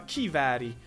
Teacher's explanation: Gewehr, und das kommt ja offenbar aus dem Deutschen. G wird zu K und E zu I.